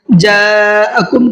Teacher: جاءکم کے اندر بڑا مد ہے، اس کو 4 سے 5 الف کے برابر کھینچ کر کے پڑھنا ہے۔